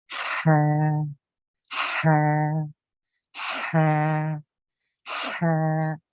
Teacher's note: یہ پتہ تھوڑا سا فورس لگانی پڑتی ہے اس کے لیے. یہ درمیانی حلق سے سانس اوپر کو محسوس ہوتا ہے، یعنی سانس اوپر کو نکلتا ہے